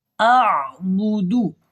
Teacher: اور بودو کو لمبا نہیں کرنا، یہ مجہول ہو جائے گا